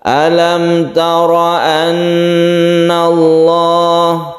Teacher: tara ini roknya dibaca tebal karena berfathah, kita sebut dengan rok tafkhim atau mufakham